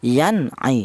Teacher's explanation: cara bacanya nun mati ini dibaca jelas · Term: idhar